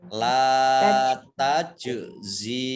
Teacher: Lam fathah alif mat tabi'i, jim sukun qalqalah, dibaca memantul